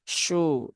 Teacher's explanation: kalau dia dhammah baru shu. Nah, baru ada pergerakan bibir yang monyong. Kalau tidak maka ya tidak perlu.